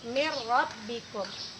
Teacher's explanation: Jadi nun matinya tadi tidak kita baca, langsung kita masukkan bunyi ro menjadi min rabbikum. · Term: idgham bila gunnah